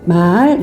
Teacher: 그래서 낮다가 높아지는 소리, 소리가 낮았다가 높아지는 소리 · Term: 상성